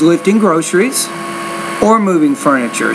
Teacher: moving furniture so when you have that A or B thing the tone on groceries should be rising and when you get to Furniture that's the end of your thought group in that sentence then the tone drops a little bit